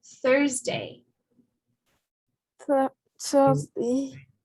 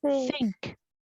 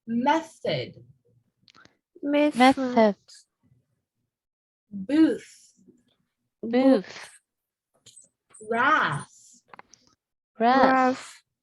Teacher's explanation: all these words have that soft, unvoiced TH sound